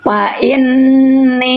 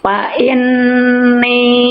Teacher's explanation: Dengung itu suara masuk ke rongga hidung. Ya, ketika dengung dia harus ditahan selama dua harakat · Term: gunah